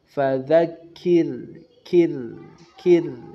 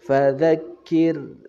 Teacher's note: Ra' sukun sebelumnya kasroh pada lafaz fadzakir, kir, ya, kirnya tipis. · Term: ra' tarqiq